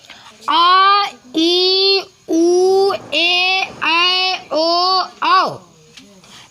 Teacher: आ ई उ ए ऐ ओ औ दीर्घ स्वर है क्योंकि उनके उच्चारण में या इनके उच्चारण में मूल स्वरों से 2 गुना समय लगता है